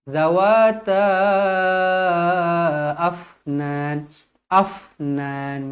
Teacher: huruf Fa dibaca Hamas berangin jadi kita nak dia matikan terus dan berangin sahaja